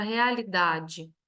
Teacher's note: nós temos na palavra realidade a sílaba tônica da, que é uma paroxítona, e ela é uma polissílaba, porque tem mais de 3 sílabas.